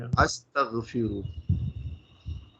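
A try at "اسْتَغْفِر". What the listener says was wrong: नहीं, इसको हम अस्तग नहीं, इसको हम इस्तगफिर, ये इस्तगफिर यहां तक है।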